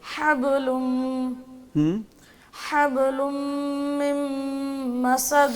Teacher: مسد من مسد ہاں فی جیدہا في جيدها حبل من مسد با پہ شد نہیں ہے ساکن ہے